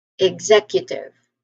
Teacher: So executive the primary stress again is on the second syllable.